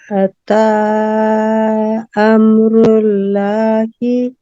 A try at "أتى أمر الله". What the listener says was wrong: اللہ کے نام کو پر کیجئے، کیونکہ پیش کے بعد جب اللہ کا نام آتا ہے تو اس کو پر کر کے ادا کیا جاتا ہے۔ امر اللہ